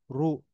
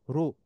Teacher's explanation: র এর উপর যদি দম্মা মানে পেশ হয় তাহলে র মোটা হবে উচ্চারণটা মোটা হবে চিকন হবে না